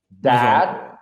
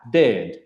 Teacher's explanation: você tem que abrir bem a boca, é um som mais longo, e o outro é um som mais curto